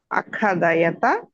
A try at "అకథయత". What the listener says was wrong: కా ఒత్తకండి. కా ఒత్తు లేదు. కా మామూలు కకారమే. తర్వాత థకారమే. కొంచెం జాగ్రత్తగా అదే మధ్యలో పక్క పక్కన ఉన్నాయి కదా, అందువల్ల పొరపాటు పడతాం. కా పక్కదేమో థా, థా వత్తాలి, కా వత్తకూడదు.